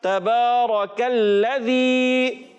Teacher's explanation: کاف کو ہم نے باریک کر کے پڑھنا ہے اور موٹا نہیں کرنا